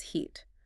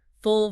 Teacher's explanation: Hold the long vowel for an extra second, and take the short vowel quick and relaxed.